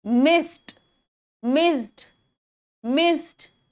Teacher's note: जो voiceless consonants है उस पे वर्ड खत्म हो रहा है, तो उसके बाद जो ईडी है उसकी आवाज टी पर ही साउंड पे खत्म होती है